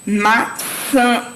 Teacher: Os sons vai ser nasalizados, saem pelo nariz, formados por uma vogal nasal. A nasalidade pode ser representada por um tio ou pela letra M ou N.